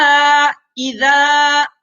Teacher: اب اذا میں دیکھیں الف مدہ ہے، الف سے پہلے حرف کے اوپر زبر ہے ذال کے اوپر، تو حرف مدہ، اور حرف مدہ کو کھینچ کر پڑھیں گے